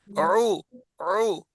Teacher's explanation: گلے کے بیچ میں گھوم کے آواز ہے، وہ عین کی ہے اور نرم ہے. حمزے میں جھٹکا ہے، عین میں جھٹکا نہیں ہے.